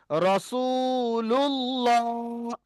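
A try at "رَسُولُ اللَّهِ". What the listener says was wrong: যাবার লা হবে না, এখানে এখানে লাম খাড়া যাবার ল হবে।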